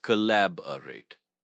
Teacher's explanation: Stress is on the second syllable, lab.